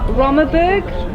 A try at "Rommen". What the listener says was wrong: Hier is het Rommen. Het is niet Rommenburg. Hier Rommen.